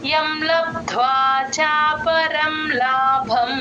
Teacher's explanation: లాభంలో బకి మహాప్రాణం ఉంది గమనించండి